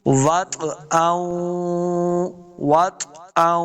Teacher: واو کو جب پڑھیں گے دونوں ہونٹ گول کرنے ہیں، واو کو طوا کے ساتھ ملانا ہے، طوا ساکن ہے، اور طوا حروف قلقلہ سے بھی ہے، قاف طوا با جیم دال جو حروف قلقلہ ہیں، تو طوا اب ساکن ہے، حروف قلقلہ سے آ گیا، تو اس کو خوب واضح کرنا ہے۔